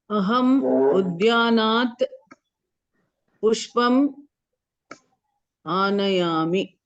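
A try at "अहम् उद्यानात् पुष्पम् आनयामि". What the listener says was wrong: Samyak.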